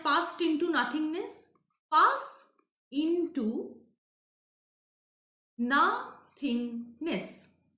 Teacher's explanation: So here into, this is an example of Pyrrhic. In and to both are unstressed.